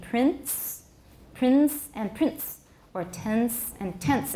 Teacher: All these words may be pronounced with a short voiceless stop between the nasal and the voiceless fricative, but the stop is not really an added gesture. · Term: epenthetic stops